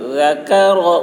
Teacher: ذال کی آواز باریک، کاف کی آواز بھی باریک ہوگی